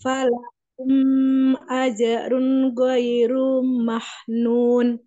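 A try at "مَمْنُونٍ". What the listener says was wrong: Mamnun. Nah, ini huruf mim. Ini mim, mim, huruf mim, mam, mamam.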